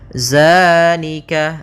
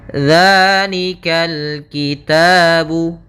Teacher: Di sini tidak dibaca dengan zai, akan tetapi dengan zal, ujung lidahnya menempel dengan gigi dari atas.